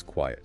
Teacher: That little E sound in quiet makes all the difference. Turns one syllable into two, almost.